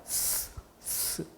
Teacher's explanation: 혀 끝에 공기가 흘러가면서 스치는 이 소리가 날 거예요. 그게 바로 마찰입니다. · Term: 마찰음